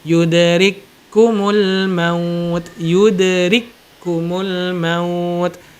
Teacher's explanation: Contoh misalkan yudrikku, nggak kita baca yudrikku, nggak ya. Kaf yang pertama tidak kita anggap, langsung masuk ke kaf yang kedua dengan adanya tasydid. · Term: idgham